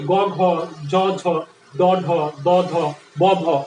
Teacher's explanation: এইগুলো একটু বেশি কাঁপে, এই জন্য এগুলাকে আমরা বলবো ঘোষ ধ্বনি।